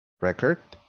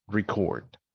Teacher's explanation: if i put the primary stress on the first syllable i have a noun if i do it on the second one i get a verb